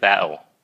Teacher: Nào khi mà that'll đó mình nói chậm thì nó nghe là that'll. Khi mình nói nhanh thì nó hơi bỏ cái chữ âm D ra